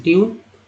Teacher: ट्यून में यू का उच्चारण क्या हुआ तो ई यू के रूप में